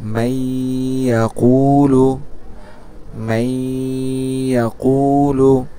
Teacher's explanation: তা নুন সাকিনের পরে ঈদগামে বা গুন্নার হরফ আসলে কি করতে হবে? উক্ত নুন সাকিন বা তানবিনকে গুন্নার সহিত মিলাইয়া পড়তে হবে